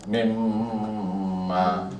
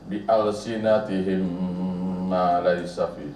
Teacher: apabila kita tengok ayat Quran yang bertemu mim bertemu dengan mim, mim bertemu dengan mim, kena dengung lah